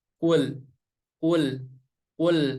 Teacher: Jadi ketika lam berharokat sukun, dialirin sedikit ya.